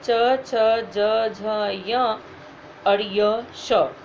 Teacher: तालव्य, इनका उच्चारण स्थान तालु के द्वारा होता है, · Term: तालव्य वर्ण